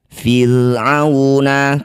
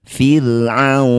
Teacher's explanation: Disebut bacaan namanya madlin ya. Jadi waw ini kita panjangkan 6 harokat. Baca dengan lembut, berikan huruf vokal u, kemudian huruf terakhir sukunkan. Fir'auna, ketika berhenti.